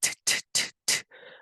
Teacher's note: So if you say t, t, t, t a few times, you will feel that your tongue is touching that alveolar ridge